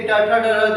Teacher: ट वर्ग, यानी ट, ठ, ड, ढ, न, है ना, ये सब जो है ये मृधा को स्पर्श करते हैं